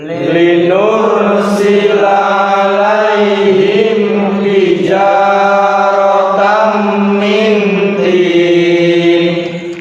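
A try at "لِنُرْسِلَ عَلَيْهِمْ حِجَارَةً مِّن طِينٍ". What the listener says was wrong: Linur sila, nur sila. Nah itu ro sukun itu jangan dikasih gunah ya. Jangan dibaca panjang. Linur sila, tapi tegas.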